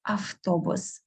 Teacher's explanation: Same we do with автобус, автобус. Instead of v, we most often pronounce f.